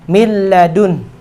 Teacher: maka ketika nun sukun bertemu dengan lam tidak boleh ada gunanya